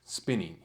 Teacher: spin gets the accent, and the ning part isn't accented. It's the unstressed part of that word, spinning. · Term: feminine endings